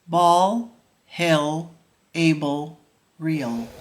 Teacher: For the dark L, put the tip of your tongue behind the top front teeth.